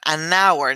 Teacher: en este caso la H es muda como en español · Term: H muda